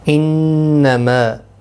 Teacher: انما نون مشدد پر غنہ ہوگا۔